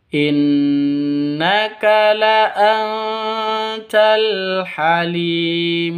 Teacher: Ya sakinah yang didahului oleh kasrah dipanjangkan dua ketukan karena merupakan bacaan Mad Asli atau Mad Thabi'i.